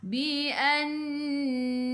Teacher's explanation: Nun ada sabdu, tekan ke dalam nun dan dengung dua harakat. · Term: wajib dengung